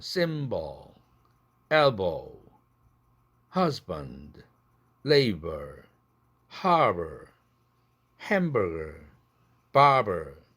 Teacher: 유성 파열음이 브드그가 약하게 파열되면 발음이 부드러워지죠. 그래서 유성음의 특징을 잘 드러내죠.